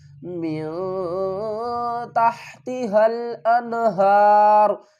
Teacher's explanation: نون کی آواز کو ظاہر کر کے پڑھیں گے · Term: اظہار